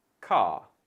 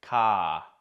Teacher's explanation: the vowel sound here for Australians is a little shorter and slightly more open than most British accents